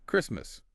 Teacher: We don't say the T. And it starts with that Chris sound, like cracker. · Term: No T sound